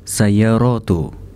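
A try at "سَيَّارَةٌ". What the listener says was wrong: Kenapa dibacanya tu tidak tun? Ini jamak muannas salim kan? Enggak mengikuti yang mafailu kan enggak? Ya. Sayaratun biasa aja berarti. Tun. Ya.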